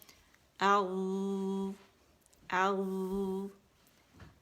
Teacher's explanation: پیچھے زبان کی جڑ اٹھا لینی ہے. آگے سے وہ مخرج پہ ہوگی، بیچ میں زبان میں ڈپ بنے گا، تو یہ موٹا لیٹر ہے.